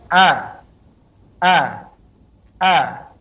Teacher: Dengan cara membukakan pita suara paling bawah, A, A, sehingga tidak ada celah untuk keluar daripada hidung. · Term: huruf hamzah